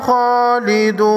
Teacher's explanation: خوا کو موٹا پڑھیں گے، حروف مستعلیہ میں سے ہے۔